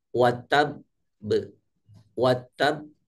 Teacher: huruf qqalah di di baca wakf dan dalam keadaan bertasjid maka dipantulkannya seperti tertahan sebentar baru dipantulkan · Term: qqolah Akbar